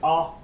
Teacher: when you say ah your tongue will be down at the bottom your mouth will be very open and at the back